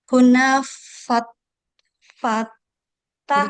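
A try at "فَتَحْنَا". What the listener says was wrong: Huruf ketiga disukun.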